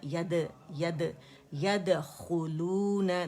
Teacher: दाल में कलकला है, बारीक ख्वा मोटा है